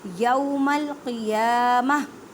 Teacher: تا کی آواز کو ہاں میں بدلیں. تو وقف مطلق کی علامت ہے، یہاں پہ وقف نہ کریں گے تو میننگ چینج ہو جائے گا، تو اس لیے وقف لازمی کریں اور تا کی آواز کو وقفی صورت میں ہاں میں بدل دیں.